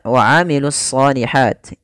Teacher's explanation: alif lam yang dia ditulis tapi tidak dibaca sehingga langsung kepada huruf shad. Kemudian pada lafal shad itu kita tebalkan wa amilus solihati, ya, ditebalkan huruf shadnya. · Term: alif lam syamsiyah